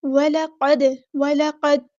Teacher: دال ساکن ہے تو یہاں پہ قلقلہ ہوگا، وَلَقَدْ، وَلَقَدْ، ایسے آواز روکنی نہیں ہے، وَلَقَدْ ہلائیں گے آواز کو۔